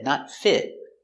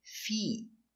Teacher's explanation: Not the short I, not fit, but the long E, feet.